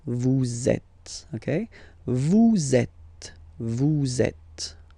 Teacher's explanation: vous is ending with S, and then you tend to make a little link between them. So vous êtes. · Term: liaison